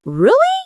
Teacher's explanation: Your voice goes up slightly at the end.